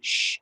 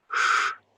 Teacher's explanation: the dot under the S is a kind of white noise, sh, and the apostrophe or accent mark over an S is a pink noise, sh sound.